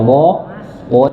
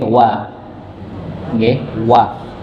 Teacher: di ayat pertama ini Wal WAnya dibaca tipis Nggih Jangan dibaca wo w tapi wa ng wa huruf satu-satunya yang dia berharakat fathah